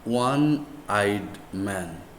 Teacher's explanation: wah is a consonant sound though the letter o is a vowel one